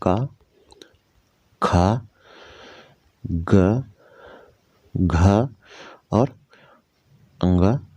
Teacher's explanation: घ का उच्चारण स्थान कंठ है।